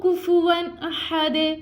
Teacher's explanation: اور دال یہاں پہ کیا ہو گیا, وقف کی علامت ہے, گول دائرے کی علامت ہے, یہاں پہ رک جانا ہے, رکیں گے تو دال کو ہم ساکن کر دیں گے, اور یہاں پہ بھی ساکن ہو جائے گا تو یہاں پہ آواز کو اس کو لٹانا ہے, یعنی کلکلا کرنا ہے